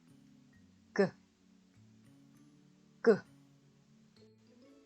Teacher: 윽 하면서 혀 뒤쪽이 입천장과 가까워지면서 공간이 닫히는 느낌이 들 거예요. 그 상태에서 끄 소리를 내보세요.